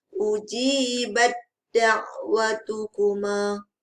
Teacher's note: Ujibat ta tidak dibunyikan. Terus disempurnakan ke dalam huruf dal. Tasydidkan kepada huruf dal.